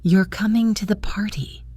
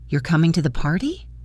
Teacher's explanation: A rising intonation at the end of a statement can turn it into a question.